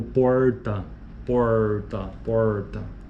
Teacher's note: se considera desagradável o r retroflexo chamado do R kaipira apresente em realizações como como porta porta